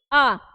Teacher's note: आ बोलने में क्या हो रहा है जो जीभ है हमारा थोड़ा पीछे की तरफ हो रहा है पीछे लग रहा है ना कि पीछे वाले भाग की सहायता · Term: पश्च स्वर